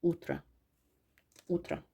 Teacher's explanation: Utra səhər utra utra odur amma vurğu uya düşdüyünə görə o a kimi tələffüz olunur